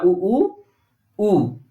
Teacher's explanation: इसमें त्रिमात्रिक समय लगा, तो ये पहले वाले उ को ह्रस्व में रखा, दूसरे उ को इन्होंने रखा दीर्घ में, और तीसरा वाला जो है जिसमें त्रिमात्रिक समय लग रहा है इसको प्लुत में रखा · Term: ह्रस्व दीर्घ प्लुत